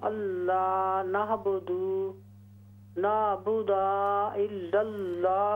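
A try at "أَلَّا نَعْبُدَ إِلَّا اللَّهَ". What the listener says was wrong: देखिए दाल पर सिर्फ ज़बर है, लंबा न करें। अल्ला नअबुद इल्लल्लाह, बस बेन सिर्फ ज़बर का ज़ेर का ख्याल रखिए, उसको लंबा ना करें। जैसे यहाँ आपने पढ़ा अल्लाह नअबुदा, तो ये अलिफ बन जाता है, दाल ज़बरदा, अल्लाह नअबुद इल्लल्लाह वला नुशरिका, अगर लंबा करेंगे तो अलिफ बन जाएगा, जो कि बड़ी गलती होगी।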